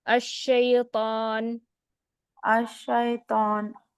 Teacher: Lips کو round نہیں کرنا, وہ ہیوینس جو آتی ہے وہ زبان کا جو جڑ ہے اس کو اٹھانے سے آتی ہے, لپس کو راؤنڈ نہیں کرنا ہے.